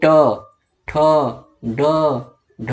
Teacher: जीभ आपकी मुड़ रही है, पीछे की तरफ मुड़ रही है, यानी जीभ आपकी ऐसे है और ऐसे हो जा रही है। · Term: मूर्धन